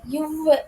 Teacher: கீழ் உதடும் மேல்வாய் பல்லும் இணைவதால் பிறக்கும் எழுத்து